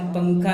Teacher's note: نون ظاہر نہیں ہوتا ہے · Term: غنہ